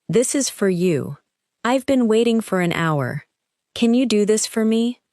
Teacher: In careful speech, it sounds like for, but in natural English, it often sounds like fur.